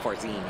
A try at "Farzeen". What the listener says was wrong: No, no, no. You don't say FARZ. Like more like fur. FARZEEN. But there's no FARZEEN. Emphasis on the first syllable. It's only on the second syllable.